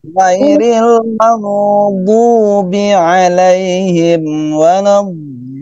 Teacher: Dibiasakan ghainnya ya agak mengalir, jangan mentok.